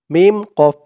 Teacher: কফটা কলকলার হরফ ধাক্কা দিয়ে পড়তে হবে